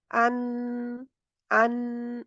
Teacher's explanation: इसको अदा करते वक़्त मख़रज ज़ुबान की नोक की तरफ से बंद हो जाता है। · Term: इज़हार का नून